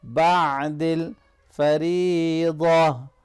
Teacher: ادا کیا کریں جب یہ ساکن ہو، ٹھیک ہے۔ بعد الفریضہ، را کو باریک پڑھیں گے کیونکہ اس کے نیچے زیر ہے